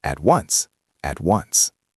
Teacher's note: >> And let's look at at once. Because at ends in a consonant and once begins with a vowel, we link them.